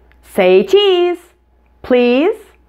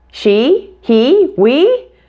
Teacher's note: equivalent sound in your language is probably a little bit different what characterizes the English version is that it's longer and tenser than in other languages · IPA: /i/